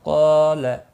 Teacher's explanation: قال، قاف اور الف دونوں پر پڑھے جائیں گے۔ قاف مستعلیہ ہے اس لیے پر پڑھا جائے گا، اس کے ساتھ الف بھی آیا یہ بھی پر پڑھا جائے گا، لا کو کھینچنا نہیں۔